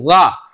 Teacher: ऐसे जा में क्या है, जा पे थोड़ी मोटी पड़ जाएगी, इसलिए जा अदा तो वहीं से होगी जा, लेकिन पिछला जो जबान की जो पुश्त है ना वो पुश्त हमें थोड़ी सी ऊपर के लिए तालु की तरफ उठाना पड़ेगी, ताकि वो थोड़ी सी पुर हो जाए, मोटी पड़ी जाए।